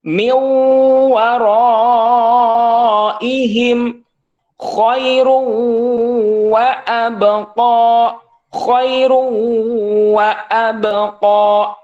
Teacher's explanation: idgham yang memakai gunnah ataupun dengung ke hidung selama 2 harkat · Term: idgham bi gunnah